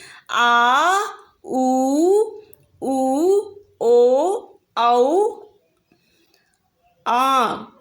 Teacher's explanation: जिन स्वरों के उच्चारण में जीभ का पश्च भाग काम करता है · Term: पश्च स्वर